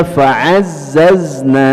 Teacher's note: huruf zai yang memiliki sifat sofir ya, jadi yang berdesis itu ya huruf zai